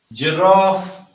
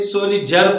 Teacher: ये कॉन्सोनेंट आवाज है ज, जुबान रोक लेती है, जो फ्लो ऑफ एयर है